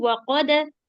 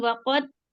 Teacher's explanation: Dalnya dikolkola dulu waqada, bukan waqad.